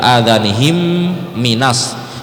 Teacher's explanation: adhanihim itu mim mati ketemu mim, itu namanya idgham mimi.